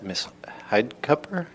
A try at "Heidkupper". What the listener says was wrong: Heidi Koper, yeah, U is silent.